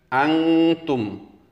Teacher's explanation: Antum itu dibaca ikhfa karena setelah huruf nun mati ada huruf ta, maka dibaca berdengung seolah-olah berbunyi huruf eng.